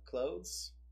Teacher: So you don't have to actually like separate the sound of clothes, but you would just like, simply say close, and it's more likely to be heard as close. Like you don't actually have to make the TH sound. Yeah, you can sort of skip the TH sound and get away with it.